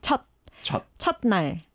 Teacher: But in this case, when the 받침 is 시옷, you don't really pronounce the 시옷 as S, but you pronounce it as like just closing your mouth